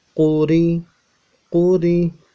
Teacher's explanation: قاف کو موٹا پڑھنا ہے، پیش کی وجہ سے ہونٹوں کو گول کرنا ہے، اور را کو باریک پڑھنا ہے کیونکہ اس کے نیچے زیر ہے۔